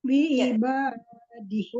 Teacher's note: Allahu itu alif lam jalulah dibaca tebal